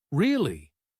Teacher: you want to sound interested. You could say, Really? with a rising tone.